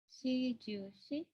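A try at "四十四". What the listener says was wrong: Benar ya, tapi untuk 4 dibacanya yon, bukan si. Yonju, yon.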